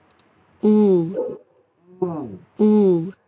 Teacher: এরপরে সাউন্ড হচ্ছে ooh, উ, ooh, long vowel, এটা লং, এটা লং, দেখেন ঠোঁট গোল হবে, ঠোঁট গোল, আর ও তে আরো ঠোঁট গোল, হ্যাঁ উতে ঠোঁটটা একটু গোল কিন্তু একটু হালকা মানে রাউন্ডটা কম হবে, আর ওতে একদম গোল হবে।